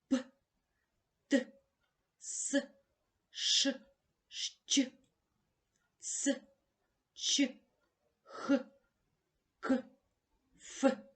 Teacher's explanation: приголосні які вимовляються тільки з участю шуму тобто глухо називаються глухими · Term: глухі приголосні